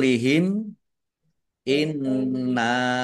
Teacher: mim sukun bertemu dengan huruf alif bacaan izhar syafawi dibaca jelas Nun tasdid dibaca ghunah atau mendengung ditahan biar Tanak dengungannya Nun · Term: gunah